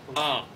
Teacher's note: Eso es una A producida donde se produce la U que se produce hasta atrás